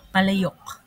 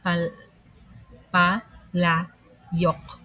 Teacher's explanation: Yung yok ay hindi kabilang sa mga ditonggo dahil naunang naunang lumabas yung y bago yung O.